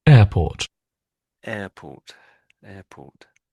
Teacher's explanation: sort of ignore the R sound. It's just air.